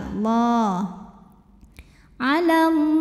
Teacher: Lam pada lafaz Allah dibunyikan secara tafkhim karena huruf sebelumnya berbaris fathah, maka bacanya tebal.